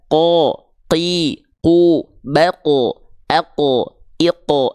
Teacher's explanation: pangkal lidah lidah terdalam kita disentuhkan ke langit-langit yang paling dalam yaitu langit-langit yang pink langit-langit yang lunak o jangan keluar nafas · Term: huruf qaf